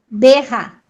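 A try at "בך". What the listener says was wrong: Berra, exatamente.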